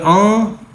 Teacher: گنہ کریں گے یعنی اخفا کریں گے، ناک میں اس کی آواز کو روکیں گے